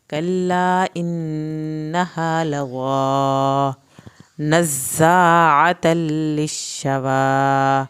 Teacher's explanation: زا کی شد ادا کی جائے گی، زا کو سختی سے پڑھیں گے، عین کو حلق سے پڑھیں گے